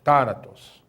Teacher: Está na antepenúltima sílaba. É uma proparoxítona, né?